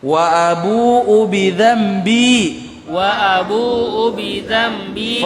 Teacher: Wa abu'u bi dzambi. Itu panjang karena mat tabii ya, kasr bertemu ya sukun.